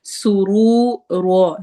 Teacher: سین میں سٹی والی آواز ہے